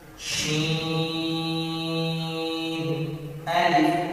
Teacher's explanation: شین کو میں نے لمبا اس لیے کیا ہے کیونکہ شین کے ساتھ مد ہے